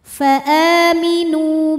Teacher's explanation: dipanjangkan maka dibacanya panjang dua harakat faaminu NU Mad Thobi'i dahohiri karena ada wau sukun didahului dhamah maka huruf nun panjang dua harakat